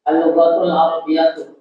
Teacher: Gak ada ikhfa ya, unzila semuanya idhar.